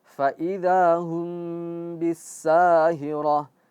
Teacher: Ketika mim sukun bertemu dengan ba, dia harus ikut gunnah.